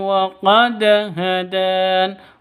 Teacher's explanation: wa qad ini qalqalah sugro karena ada di tengah